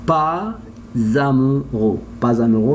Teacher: they have S after that vowel. I must change it by Z